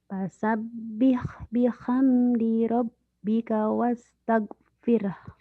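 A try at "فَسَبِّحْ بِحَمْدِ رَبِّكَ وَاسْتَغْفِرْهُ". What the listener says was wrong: Nah, Ibu orang Sunda mah tage, jangan tage. G-nya teh pecah. Nih Bu, dengerin. Fasabbih bihamdi rabbika wastaghfir. Latihan G-nya gini, Bu.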